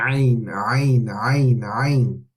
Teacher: We're using the same part of the throat as the Ha, the middle of the throat, okay? Strong A or U sound coming from the middle of the throat. It's different to English, it's like A, but it's different, okay?